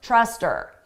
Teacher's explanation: we can get rid of that H sound and it just sounds like, uh, trust her